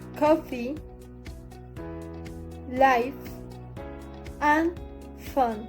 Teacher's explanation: The inner of lower lip touches the upper teeth. The place of articulation is labiodental.